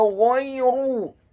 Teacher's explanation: huruf ghainnya dibaca tafkhim, tebal, fathah 1 harokat. Huruf ya-nya dibaca sukun.